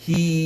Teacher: Tutup mulut. Bunyi tawassut pada mim.